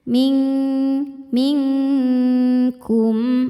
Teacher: Cara bacanya nun disamarkan ke kaf disertai dengungan. Dengungnya besar karena kaf makhrajnya jauh dari nun. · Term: ikhfa hakiki ab'ad